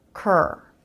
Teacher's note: your lips can form the R as you make the K sound with the back of the tongue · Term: CR consonant cluster